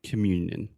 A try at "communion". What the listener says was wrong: So you're saying commune.